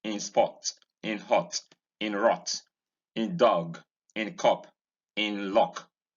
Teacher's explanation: Vowel number 6 is a mid-back rounded short vowel.